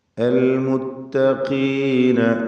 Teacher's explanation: ഖാഫ് ഇസ്തിഅലാൻ്റെ അക്ഷരമാണ്, എന്നാൽ കസ്റായതുകൊണ്ട് കുറഞ്ഞ തഫ്ഖീം മാത്രം നൽകുക. ഇലർ റഹ്മാനി, റാ തഫ്ഖീം ചെയ്യണം.